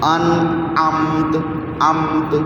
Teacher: ہاں تا کو زیادہ کلیئر نہیں کرنا، پھر وہ کلکلا بن جائے گا. تا کلکلا لیکن تھوڑی سی آواز دینی ہے ابھی سمجھنے کے لیے، بے شک زیادہ تھوڑی دے لو.